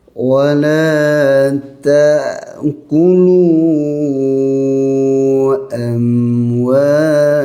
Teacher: Huruf ain dia akan bunyi wala tu ain, bukannya hamzah. Hamzah ni keluarnya di akhir kerongkong ya, pangkal kerongkong.